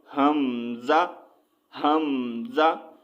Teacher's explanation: हमज़ा की आवाज़ जो है झटका, ठीक है, झटका देकर जो है अदा होती है